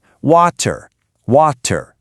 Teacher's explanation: In a lot of Indian English, that T has a very sharp, clear, hard sound.